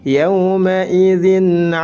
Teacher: tanwin bertemu dengan huruf Ain dibaca izhar karena huruf Ain ini merupakan salah satu huruf tenggorokan maka tanwinnya dilafalkan atau dijelaskan